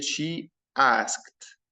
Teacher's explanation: Notice guys the ed, the final ed, not the final ed هنا ما قلتش asked or asked. the final ed I pronounce it as t sound